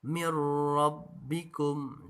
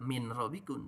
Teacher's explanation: Nun sukunnya, contoh nun sukun menghadapi ro ini adalah mir rabbikum. Jadi tidak min rabbikum tapi mir rabbikum. Apa yang dimasukkan? Nun yang dimasukkan ke ro. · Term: idgham bila gunnah